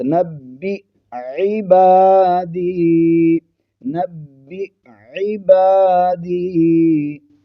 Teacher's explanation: حمزہ اور عین کی آواز کو واضح کر کے فرق کے ساتھ پڑھنا ہے · عین جو ہے حلق کے درمیانی حصے سے ادا ہوتی ہے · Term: حمزہ ساکن